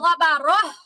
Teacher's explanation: গোলটায় যদি আপনি থামেন তাহলে তখন উচ্চারণটা আর তা থাকে না, উচ্চারণটা হয়ে যায় হা